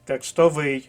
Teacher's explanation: наголос на третьому складі